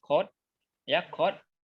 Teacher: Berarti di lidah belakang dan soft palate, berarti langit belakang dan lidah belakang.